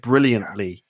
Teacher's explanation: the tongue goes into the position but it doesn't aspirate the t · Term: unaspirated